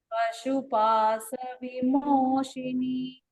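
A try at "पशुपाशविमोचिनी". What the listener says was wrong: Pashupasha vimochini. Bhagini, you are actually chanting the Sha correctly, but somewhere you are getting confused and chanting Sa in previous one. Pashu Pasha.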